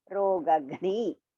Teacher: The first Ga is Alpa Prana. The second one is Mahaprana.